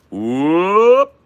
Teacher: the stop plosive at the end is provided by the cut it's very short